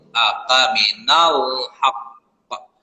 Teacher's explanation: itu qalqalah kubra ya haq karena diberhenti di situ